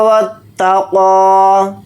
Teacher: واو کو تا کے ساتھ ملا کر پڑھیں گے، یہ الف نہیں پڑھا جائے گا، تا کو یہاں پر جلدی پڑھیں گے. قاف کو یہاں پر موٹا یعنی پر پڑھیں گے، اور قاف کے اوپر کھڑا زبر ہے، قاف کو تھوڑا کھینچ کر پڑھیں گے، ایک الف کی مقدار، یا نہیں پڑھا جائے گا.